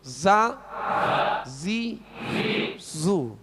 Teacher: زا کو سختی سے، دونوں باریک ہیں، ذال بھی باریک اور زا بھی باریک، مگر فرق کیا ہے کہ زا کو سیٹی کی آواز میں سختی سے پڑھیں گے